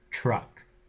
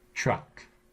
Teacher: means it's moved from the alveolar ridge further back that is your tongue hits further back than it normally would on the alveolar Ridge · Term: palatalized